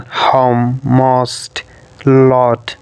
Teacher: Lips may be slightly rounded in anticipation of the glide towards o.